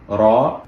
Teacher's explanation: the lips are making a circular shape and you are producing the sound from the front of your mouth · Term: full mouth